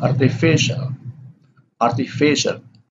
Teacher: objectives which end with l have this primary stress on the second syllable from the last · The art here has the secondary stress, and fe here has the primary stress.